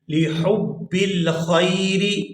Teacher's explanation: یہاں حا کو حلق سے اچھی طرح سے ادا کریں گے،